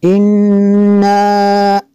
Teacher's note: نون مشدد ہے، یہاں پہ غنہ کریں گے